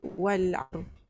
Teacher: Ramai yang baca wal asr. Dia lantunkan sad dengan ra.